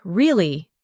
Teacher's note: your voice goes up slightly at the end